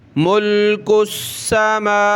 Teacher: ایک الف کی لمٹ میں کھینچیں گے میم کو اور واو کو بھی